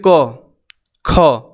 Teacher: क बोलिए, क, ख। तो देखिए जो हमारा आवाज़ निकल रहा पूरे कंठ से निकल रहा है, और कंठ का बिना स्पर्श हुए ये आवाज़ नहीं निकल सकता